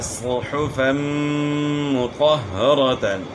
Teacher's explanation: دو زبر کی تنوین کے بعد میم آ گیا تو ادغام ہوگا غنے کے ساتھ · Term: ادغام مع الغنہ